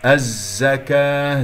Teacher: زاي مشددة ويجري فيها الصوت، لا يجري فيها النفس، ليست من أحرف فحث أو شخص سكت.